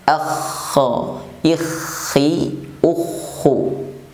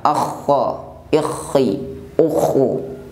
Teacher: Huruf kha apabila diucapkan juga terdapat sifat hamas atau hembusan nafas yang keluar saat pengucapannya.